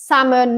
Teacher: Salmon, we don't pronounce the L.